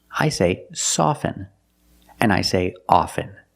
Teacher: With both words, I don't pronounce the T.